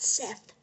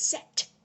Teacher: with Egyptian god names, the TH makes the hard T sound. So it's not Seth, it's Set.